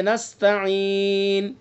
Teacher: نون کے اوپر اصل حرکت ہے، پیش ہے، لیکن وقف ہم نے کیا تو یہ سکون سے بدل گیا۔ تو یا حرف مدہ ہے، یا حرف مدہ کے بعد سکون وقف کی وجہ سے، نستعین۔